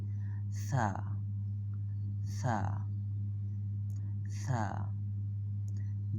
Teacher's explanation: উপরের দাঁতের আগার সাথে জিহ্বার আগা একত্রে মিশে উচ্চারিত হবে